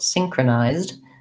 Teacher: so we have the diphthong i here that's long